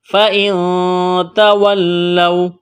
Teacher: واو لین ہے، تو اس کو کھینچنا نہیں ہے · لفظ اللہ کے نام سے پہلے زبر ہے، تو لفظ اللہ کے نام کو موٹا کرنا ہے